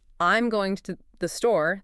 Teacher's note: that I'm gets smaller. Going gets streamlined and the emphasis lands right where it should on store. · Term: rhythm